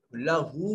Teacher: واو المدیہ صغیرہ ہے, لمبا کر کے پڑھیں گے اور ہونٹوں کو گول کر کے پڑھیں گے